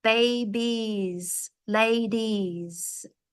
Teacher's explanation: make it very long like an e e and then the S is like a zed